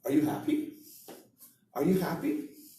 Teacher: At the end, going up, that means I'm asking a question. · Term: Intonation